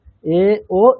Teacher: এ ও are long vowels and do not have corresponding short version as we find in Tamil, Kannada, etc. মানে সেখানে যেমন আমরা একার ঔকারের যেমন একটা শর্ট ফর্ম দেখতে পাই, শর্ট ভার্সন, সংস্কৃতের ক্ষেত্রে সেটা হয় না।